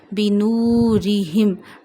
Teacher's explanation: Don't stretch kasra below ra and ha, and read ra in a thin voice.